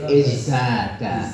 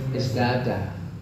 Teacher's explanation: tak ketika ketemu dengan za diganti dengan dal. Misalnya zada menjadi istada menjadi izdada. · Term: asimilasi